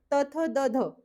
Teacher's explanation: ह्यांना दंत्य म्हणतात. कारण त, थ, द, ध असा उच्चार करताना दातांना स्पर्श होतो